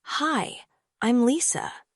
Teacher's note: When you say, "Hi, I'm Lisa," try saying it with a smile and a rising tone. It shows friendliness and energy.